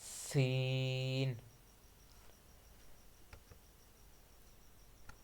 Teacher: सीन में हमने सीटी की आवाज निकालनी है। · سین میں ہم نے سیٹی کی آواز نکالنی ہے